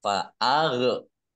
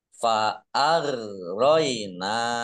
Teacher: Fa'ar-roina. Nah, roin bukan kolkolah, jangan dipantulkan.